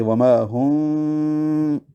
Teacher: میم ساکن پہ ہونٹ بند نہیں کریں گے کیونکہ آگے با ہے تو اخفاء شفوی کرنا ہے ہونٹوں میں، با میں ہونٹ ملا دیں گے۔ وما ہم بھی، اس کی مثال یوں بھی دی جا سکتی ہے کہ آپ ایک پیپر، ایک ورقہ منہ میں رکھ لیں اور میم کے پڑھتے ہوئے اس میں دونوں ہونٹوں کو جوڑنے سے بچایا جائے، جبکہ با میں دونوں ہونٹ جوڑ دیے جائیں۔